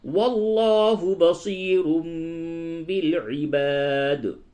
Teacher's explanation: وَاللَّهُ، لام کو پر کیجئے، وَاللَّهُ بَصِيرٌ بالعباد، تنوین کے بعد با ہے، یہاں پہ قلب ہوگا